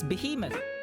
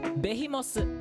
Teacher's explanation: the Japanese don't have a TH sound. So they switch to S.